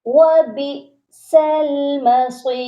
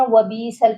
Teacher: جب بھی حمزہ ساکن ہوتا ہے، حمزہ کے اوپر جزم ہوتی ہے تو اس پر ہم نے جھٹکا لازمی دینا ہوتا ہے · بہت سے لوگ یہاں پر غلطی یہ کرتے ہیں وبیسل پڑھتے ہیں، تو یہاں پر حمزہ کی جگہ وہ یا کو ملا دیتے ہیں